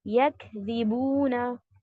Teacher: यहाँ पर हम्स की सिफत आफ्टर शिद्दा, शिद्दा करेंगे पहले, यक, फिर ब्रेथ आपकी फ्लो होगी, यक यकज़िबूना।